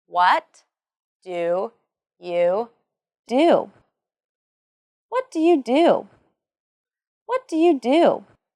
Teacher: there is the falling intonation and the emphasis on what and do in the sentence.